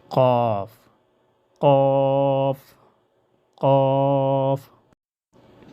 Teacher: جو کہ زبان کی جڑ اوپر تالو کے ساتھ سختی سے لگ جائے۔